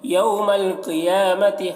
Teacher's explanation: قاف کو پر پڑھیں گے، یا کو کھینچ کر پڑھیں گے، کھڑا زبر ہے